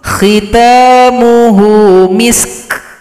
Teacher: itu huruf Kaf yang ada bunyi angin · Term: Hamas